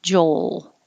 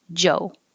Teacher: hold your tongue in the l position a little longer to make the noise